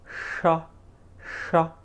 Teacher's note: This is from the cerebral area.